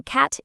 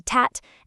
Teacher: Like swapping every C- sound for a T- sound, turning cat into tat and car into tar.